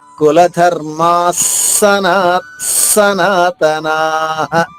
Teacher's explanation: ఈ పొల్లుగా ఉన్న స తర్వాత ఇంకొక స పూర్ణంగా ఉంది ఆ రెండు కలిస్తే స కింద స ద్విత్వాక్షరలా మారుతుంది